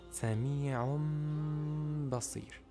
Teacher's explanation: So here we have a tanwin on word sami'un and followed by the letter ba at the beginning of the word of basir. So you turn the tanwin into meem sound and add ghunnah for two beats.